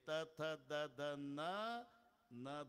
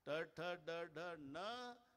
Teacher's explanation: ट ठ ड ढ न ण ते ते अजिबात दाताला लागणार नाही टाळूलाच लागणार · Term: मूर्धन्य